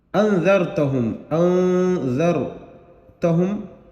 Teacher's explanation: یہاں نون پر اخفا کریں گے۔ اخفا کا قاعدہ آپ سبق نمبر 10 میں دیکھ سکتے ہیں